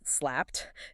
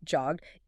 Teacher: T after voiceless sounds, slapped. D after voice sounds, jogged.